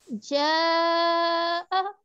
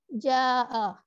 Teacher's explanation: ہم نے اس کو 5 انگلیوں کے برابر لمبا کیا کیونکہ اس سے مد تھی, لیکن اگر ہم اسے ایسے پڑھ لیں جاء تو وہ ایک جو ایک اس کے اندر خوبصورتی آ رہی تھی وہ ختم ہو گئی ہے.